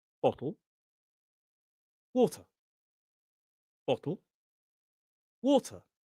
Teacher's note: In the word bottle and water, we stress the they both have two syllables and we stress the first